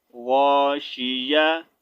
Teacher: تا کا ساؤنڈ جو ہے ہا میں بدل رہے ہیں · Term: وقف بالابدال